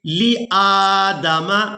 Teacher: تو اس لفظ کو اس طرح سے ادا کریں گے، لِآدَمَ، حمزہ کو کھڑی زبر کی وجہ سے کھینچ کر ادا کریں گے.